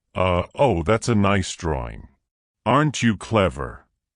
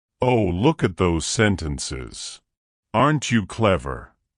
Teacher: when adults talk to Children their voice goes up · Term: caretaker talk